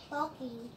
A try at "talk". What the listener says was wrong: May ing ba dito? This is just talk. Talk. Talk.